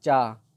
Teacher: जैसे देखिए तालु ऊपर से, चा जो अपनी जीभ है वो ऊपर लगेगी तालु में